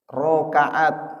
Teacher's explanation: Ro itu juga termasuk dia huruf tebal, tapi tidak disebut isti'la